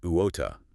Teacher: British English often more like uota, clear T, maybe a softer or dropped R at the end.